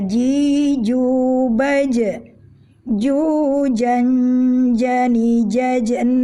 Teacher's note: Tengah lidah menempel dengan rapat ke langit-langit tidak ada celah sedikitpun Karena bila tidak rapat menempelnya atau kita memberi sedikit celah maka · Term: huruf Jim